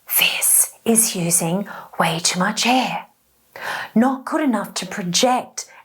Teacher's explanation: it's like whispering just way too much air flapping through the vocal folds